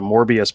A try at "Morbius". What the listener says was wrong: Mobius. There's no R in there, buddy. It's Morbius is the living vampire. You said Morbius. It's Mobius.